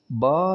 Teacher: دونوں ہونٹوں کے اندرونی تری کے ملنے سے ادا ہوتا ہے